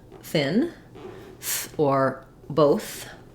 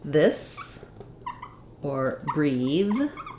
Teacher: that's a voiceless th and then we have the voiced th like in um this or breathe